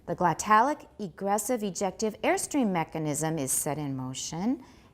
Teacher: air is the tonic and then we're gonna stay flat until we need to rise way at the end of that part of the sentence